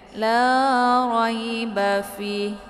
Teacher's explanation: Jadi ini dibaca sebagai mad ' arid lissukan. Dapat dibaca dengan panjang empat atau lima harakat. Jadi jangan berhenti tiba-tiba di 'fi'.